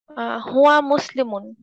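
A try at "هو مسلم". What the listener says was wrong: Very good.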